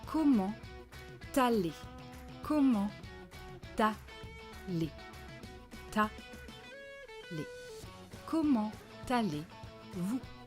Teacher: Comment, silent T, but because here there is a liaison, we are going to pronounce it.